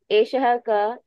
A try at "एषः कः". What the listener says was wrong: Eshaha kaha. pronounce the visarga also.